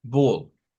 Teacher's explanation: la A con la L suena como o y sí, tienen razón, es como una o